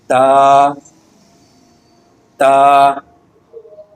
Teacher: زبان کا کنارہ اور ثنایا علیہ دونوں دانتوں کی جڑ سے لگے